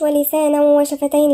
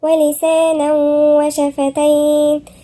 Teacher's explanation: ولسانا تنوين وبعدها الواو، والواو مش من حروف الاستثناء يبقى في غنة. ولسانا هنغن هنا ومنقولهاش بسرعة، منقولش ولسانا وشفتين، لأ، ولسانا وشفتين.